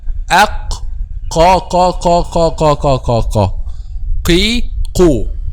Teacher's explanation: the back of the tongue touches what lies opposite, which is the soft palate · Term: Qaf